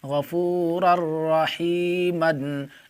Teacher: یہاں پر دیکھیں تنوین کے بعد حرف یرملون میں سے را آ رہا ہے، اس لیے تنوین کو را سے ملا کر بغیر گنہ کے پڑھیں گے۔ اس کو ادغام بلا گنہ اور ادغام تام بھی کہا جاتا ہے۔